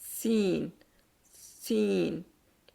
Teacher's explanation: क्योंकि हमारी जो और इसके क्या होगा कि अंदरूनी जो जड़ जो है कि निचले दोनों दांतों की अंदरूनी जड़ों के साथ मिलके अदा होता है कि मखरज जुबान की नोक और सामने के निचले दोनों दांतों के अंदरूनी जड़ यानी मसूड़ों से मिलकर अदा होता है और ऊपर के दांत और नीचे के दांत देखिए आपस में करीब आ जाते हैं और निचले दांतों के बिल्कुल साथ लगती जुबान क्योंकि शुरू वहां से होती है सीन सीन तो करके देखें बहुत आसान है।